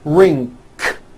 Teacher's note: as a second language have gotten into the bad habit of adding a k release sound CK like that after an NG ending